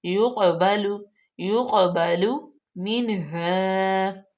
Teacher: کاف حروف قلقلہ میں سے بھی ہے اور پر بھی پڑھا جائے گا